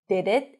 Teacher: when you pronounce the D with a blade, it's a little heavier